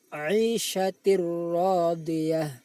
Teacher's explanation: memasukkan bunyi tanwin ke dalam ra tanpa didengungkan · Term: idgham